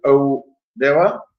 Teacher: with a rolling R if you're from abroad